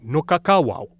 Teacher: with a voiced w in the middle and a voiceless w at the end